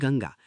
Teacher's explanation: अनुस्वार अंग याचा उच्चार नाकातून स्पष्ट आणि खणखणीत होतो